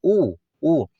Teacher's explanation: आपके होठ जो है ना दोनों बाहर की ओर निकल के आते हैं